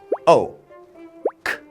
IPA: əʊ